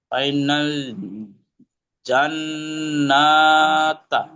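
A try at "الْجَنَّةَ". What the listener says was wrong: মাশাআল্লাহ, সুন্দর হয়েছে। তবে গোলতাকে ওয়াকফ করার সময় হা বলে দেবেন। ফাইনাল জান্নাহ, জান্নাহ।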